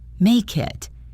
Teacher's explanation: The next important connection is between the words make and it. The final K sound of make links directly to the I in it. It sounds like one word, make it.